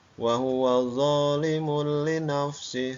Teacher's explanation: Ini suara domatainnya hilang, masuk ke dalam huruf lam. Itu domatain bertemu dengan huruf lam. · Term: idgham bila gunah